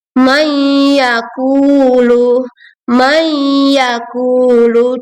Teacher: dengan meleburkan nun sukun ke huruf berikutnya disertai gunah atau dengung dengan 2 sampai 3 harokat panjangnya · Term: idgham bigunah